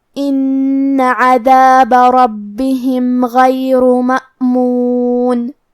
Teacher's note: آخری میں کیونکہ را پہ پیش ہے تو ہمیں را کو موٹی آواز میں پڑھنا ہے · کلمت مأمون میں یہاں الف ہے اور اس پہ جزم ہے، لہذا ہمیں حمزہ کو ظاہر کرنا ہے اور حمزہ کی ادائیگی حلق کے نیچے والے حصے سے ہے